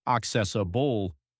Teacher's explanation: it's pronounced accessable with stress on the second syllable.